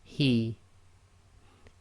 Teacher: this is a soft ha coming from the bottom of the throat